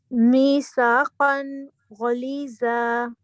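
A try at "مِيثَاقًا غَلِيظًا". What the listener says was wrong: ہاں ٹھیک ہے اور ذا کو ہیوی کرنا ہے بس باقی ٹھیک ہے الحمدللہ.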